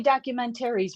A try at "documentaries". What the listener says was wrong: Jesus, you say it super fast.